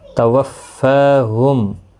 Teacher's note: توفاہم، فا کو سختی کے ساتھ پڑھیں تاکہ تشدید ظاہر ہو۔ فا کے اوپر کھڑی زبر بھی ہے، ایک الف کی مقدار کے برابر کھینچ کر بھی پڑھیں گے۔